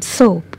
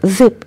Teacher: s like in soap is voiceless Z like in zip is voiced